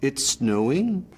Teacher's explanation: Canadians have this rise at the end, so every statement sounds like a question. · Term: Canadian rise